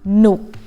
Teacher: So you add หอหีบ then it become หนุก with low tone